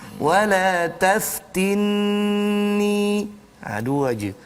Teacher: jangan panjang sampai 4 atau 5, tetapi bacalah hanya 2 harakat. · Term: mad asli